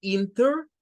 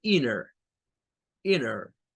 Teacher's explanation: cuando aparece la n y la t muchos norteamericanos tienden a omitir el sonido de la t y no dicen inter sino que dicen Inner Inner interinter National